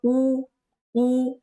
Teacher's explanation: ओष्ठ्य गटामधले आपले बघा वर्ण त्यामध्ये आपले स्वर आहेत उ आणि उ. बघा ज्यावेळेस आपण यांचा उच्चार करतो तर ओठ बघा उ उ या प्रकारे आपले ओठ पुढे निमुळतात